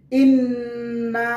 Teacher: ইন্না এখানে গুন্নাহ করতে হবে, কারণ নুনের উপরে তাসদীদ রয়েছে